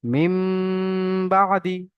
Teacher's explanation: নুন সাকিনকে মিমের দ্বারা পরিবর্তন করে এক আলিফ পরিমাণ গুন্না করে পড়তে হবে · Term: ইকলাব